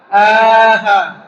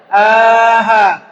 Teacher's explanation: Di pangkal tenggorokan bergetar dia.